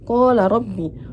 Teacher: Untuk qala rabbi ini terdapat tajwid mat tabi'i karena hukum alif di fathah dan huruf ro dibaca tafkim sebab berharokat fathah